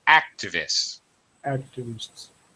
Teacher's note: the word activist first syllable stress activists activists yeah that's it first syllable stress okay you got